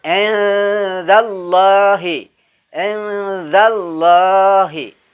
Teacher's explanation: Bunyi eng tetapi tidak terlalu tegas engnya